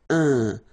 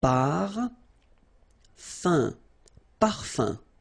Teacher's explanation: So remember, even if you've got this like that, phonetically it's exactly the same thing as if you would have un. So it's nasal and it's un. So it really goes in your nose. You don't pronounce the M at all.